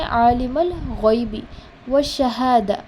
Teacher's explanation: غین پڑھتے ہو تو آپ کے گلے میں تھوڑا سا خراش والا فیلنگ آئے گا